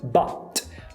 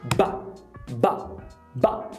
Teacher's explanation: É quando tem uma parada glotal que a sua glote vai picar esse T. Então, ao invés de but, fica ba, ba.